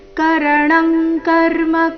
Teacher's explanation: ಅನುಸ್ವಾರದ ಉಚ್ಚಾರಣೆ ಕ ವರ್ಗದ ಅನುನಾಸಿಕ